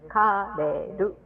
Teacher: it's still pronounced in Japanese way, and we don't have L's and R's. It's in between.